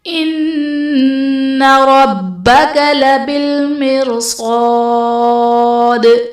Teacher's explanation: ربک میں را پر زبر، را کو پر پڑھیں گے. با حرف قلقلہ مشدد ہے، یہاں پر قلقلہ خوب جماؤ کے ساتھ ادا کریں گے. لبالمرصاد میں را ساکن سے پہلے زیر ہے، یہاں پر را کو باریک پڑھیں گے.